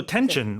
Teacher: the dictionary will say tension, but there's a little ch sound in there